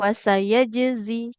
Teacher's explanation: pantulkan dulu huruf jimnya